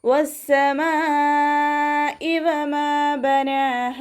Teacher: മദ്ദക്ഷരവും ഹംസയും ഒരേ വേർഡിലായിട്ടാണ് വന്നിട്ടുള്ളത്, അപ്പോൾ വാജിബ് മുത്തസിലാണ്. 4 5 ഹർക്കത്ത് നിർബന്ധമായിട്ട് നീട്ടിക്കൊടുക്കണം കേട്ടോ · മീമിൻ്റെ കൂടെ അലിഫ് മദ് വന്നു, 2 കൗണ്ട് നീട്ടിക്കൊടുക്കുക. നൂനിൻ്റെ കൂടെ അലിഫ് സോഹിറയാണ് വന്നിട്ടുള്ളത്, 2 കൗണ്ട് നീട്ടുക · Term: മദ് വാജിബ് മുത്തസിൽ